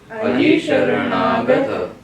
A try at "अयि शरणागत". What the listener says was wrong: शरणागत नहीं है, हिंदी में हम शरणागत में रा को आधा बोलते हैं, ता को आधा, दो अक्षर आधे बोलते हैं और जानते नहीं कि दो आधे बोल रहे हैं। शरणागत तो शरणागत में रा को आधा कर दिया, ता को आधा कर दिया।